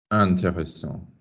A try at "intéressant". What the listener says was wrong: Now soften it and don't bang it particularly, but just hit that vowel. You dropped it down to on. Yeah. Why do you think we're going to on? It's closer to the dark fucking black hole of where you all want to pull all vowels. There ain't no word intéressant in French.